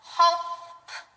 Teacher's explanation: sound to the end okay think about the p p sound we know that the P sound is voiceless